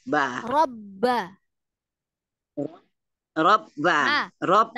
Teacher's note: Karena Umi rapatkan bibir, maka dia masuk hidung. Hilanglah satu huruf ba-nya.